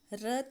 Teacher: जब बोलते समय जीभ तालु से एकदम लुढ़क जाए, ठीक है, तालु को स्पर्श करते हुए लुढ़क जाए, तो उससे कहते हैं हम लुंठित व्यंजन।